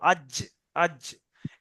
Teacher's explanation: জিম জীবের মাঝখান উপরের তালু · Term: জিমের মাখরাজ